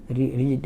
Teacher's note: आपके मुख की गुहा में आपका जो जीभ है वो हल्का सा कर्व लेकर ऊपर को टच कर रहा है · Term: मूर्धा